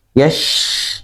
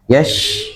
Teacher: Shin itu bahkan harus memiliki sifat mengalir ya, mengalir ketika mengucapkannya.